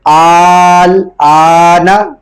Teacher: اسی طرح ایک اس تختی کے آخر میں ایک لفظ ہے آنا، اس کی اس طرح ہوگی حمزہ لام کھڑا مز زبر آل، اور آگے ایک حمزہ ہے جس کے اوپر کھڑا زبر ڈلا ہوا ہے، حمزہ کھڑا زبر آل، نون زبر نا، آل آنا وقف میں آل آن. جو پہلا حمزہ ہے اس لفظ میں اس کو 4 الف کی مقدار کھینچیں گے کیونکہ اس کے اوپر مد ہے، اور جو دوسرا حمزہ اس کو 1 الف کی مقدار کھینچیں گے کیونکہ اس کے اوپر کھڑی حرکات ہے.